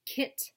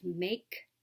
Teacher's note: back of the mouth with a voiceless sound as in the beginning of kit and the ending sound of make